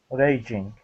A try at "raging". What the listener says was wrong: There you go.